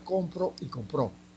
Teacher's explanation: el acento Se movió ahí hay función distintiva